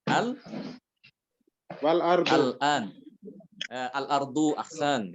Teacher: Al-ardu itu ketemu dengan hamzah. Jadi lamnya dibaca jelas. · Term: idhar